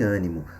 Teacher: o circunflexo vai nos mostrar que a vogal é fechada. No caso de ânimo, quando a boca ela quase é fechada para pronunciar a vogal A